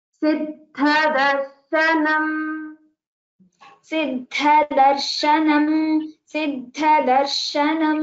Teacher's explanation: Stress on Dha and it's a Mahaprana.